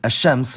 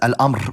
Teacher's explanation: as the sun is الشمس, which has the gemination, and the moon is القمر, which keeps the /l/